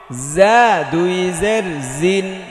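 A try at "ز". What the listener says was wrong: একটু শক্ত করতে হবে, হ্যাঁ।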